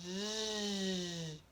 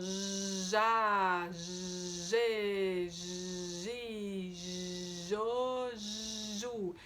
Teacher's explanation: Então é um som j, um som linguopalatal, lembra que a gente coloca o meio da língua lá no céu da boca, um biquinho